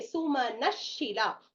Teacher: Because the next word is a shakara, the visarga is getting replaced by a shakara. And in the last, Shila, okay, giving the jihvamolia sound.